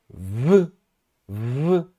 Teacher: Meus dentes superiores tocam no meu lábio inferior, e aí o ar para. No caso de V, o ar não para totalmente.